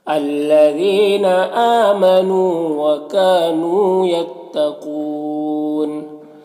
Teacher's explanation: یتقون قاف حروف مستعلیہ میں سے ہے، پر پڑھیں گے۔ یہاں پر وقف کی صورت میں مد عارض وقفی ہوگا